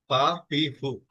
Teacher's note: ফার উচ্চারণটা খুব সহজ, এটা হবে দাঁতের উপরের দাঁতের আগা হচ্ছে নিচের ঠোঁটের বিজা অংশে লেগে এটা উচ্চারিত হবে